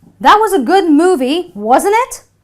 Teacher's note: So therefore, since I'm around 70% sure that she will agree with me, my voice will rise when I'm using the question tag, because my rising voice indicates that I'm really eager to get her to say yes to what I am asking her through my question. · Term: rising intonation